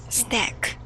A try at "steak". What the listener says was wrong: Stack. Not quite. We just went over this, right? Long A sound. Steak. Steak. So it has a long A sound. This one might be a little tricky because it looks like steak, but it's actually steak.